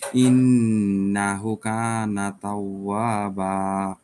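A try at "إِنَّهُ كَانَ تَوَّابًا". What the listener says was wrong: হু ছোট হয়ে গেছে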